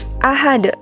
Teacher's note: maka kita membacanya menjadi ahad dengan pantulan huruf dalnya yang cukup diberatkan. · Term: qalqalah kubra